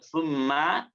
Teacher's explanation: bibirnya keduanya dirapatkan sebagai makhraj asalnya dan suaranya keluar dari rongga hidung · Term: gunah musyaddad